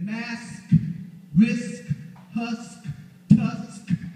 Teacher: that SK, that's a voiceless consonant cluster blend. Both of those are voiceless.